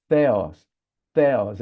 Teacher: Theos é com a língua nos dentes. · a letra teta, que é um T assoprado, um T com H, não é? É o T em inglês.